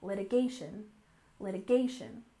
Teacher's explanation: next we have litigation with stress on the third syllable